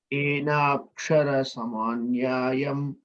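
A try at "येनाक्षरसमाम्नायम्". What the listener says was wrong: There is no ya there. Enakshara samam nayam, not nyayam. Samam nayam. Enakshara samam nayam.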